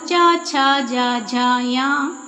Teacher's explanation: तालव्य वर्ण यानी तालु से जो बोले जाते हैं